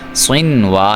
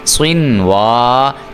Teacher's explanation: صاد کو بھی آپ نے موٹا کر کے پڑھنا ہے اور واو پہ آپ نے ہونٹ گول کرنے ہیں